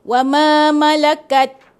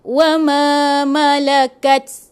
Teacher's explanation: Sepatutnya ta yang mati tu dia ada bunyi hamas tu, angin.